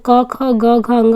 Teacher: जब के ख जी ग बोलेंगे तो कंठ से होगा